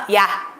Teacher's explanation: 근데 우리가 야 라고 발음할 때는요, 야 입모양이 변하는 거 보이시나요? 이에서 시작해서 아로 끝난다는 거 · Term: 이중 모음, 이중모음